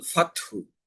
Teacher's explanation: লাহানি জালির 5ম প্রকার সাকিনের স্থলে হরকত পড়া। আছে আমার সাকিন, কিন্তু আমি হরকত পড়লাম, সেই ক্ষেত্রেও অর্থের পরিবর্তনে তেলাওয়াত অশুদ্ধ হয়ে যাবে।